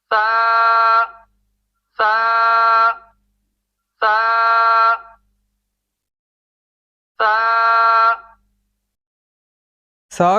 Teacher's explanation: ثنایا علیہ کے کناروں کی اندرونی جگہ پر نوک زبان کا اگلا حصہ بہت آہستہ سے لگانا ہے ، دبا کے لگائیں گے تو سا کی جگہ پر سین